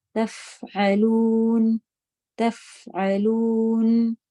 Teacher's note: تو فا کو آپ نے ہمس کے ساتھ رخاوہ کیا